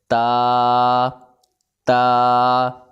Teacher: زبان کی نوک اور اوپر کے دانتوں کی جڑ سے ادا ہوتا ہے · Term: حروف نطقیہ